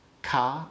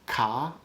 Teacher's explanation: english doesn't distinguish between ca made on your soft palate and ka made further back